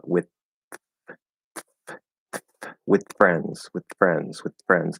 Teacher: we can do that dental TD variation, and since it's voiceless, it would be a dental T. So you can say with friends, and once you release that T, you just bring the lip up with friends, with friends, with friends.